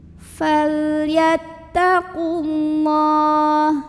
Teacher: Cara bacanya dipanjangkan lamnya 2 harokat saja. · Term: mad asli